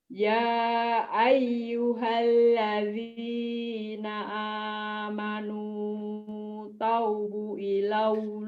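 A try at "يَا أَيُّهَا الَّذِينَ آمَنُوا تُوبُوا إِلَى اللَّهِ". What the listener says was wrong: Tubu bukan taubu. Ya ayyuhalladzina amanu tubu ilallahi taubatan nasuha. Ya ayyuhalladzina amanu tubu ilallahi taubatan nasuha.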